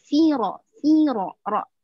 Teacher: Firo, ro-nya itu tandanya panjang dua harokat. Karena dia ada alif.